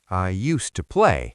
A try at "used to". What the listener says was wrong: And the D is silent. You don't say used to. You just blend it. Usta. Usta.